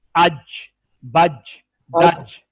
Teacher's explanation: ये है वस्ते हलक, ये है ऊपर हलक के दरमियान लगे, जुबान का दरमियान तालु के दरमियान के साथ लगे, इससे जीम निकलेगा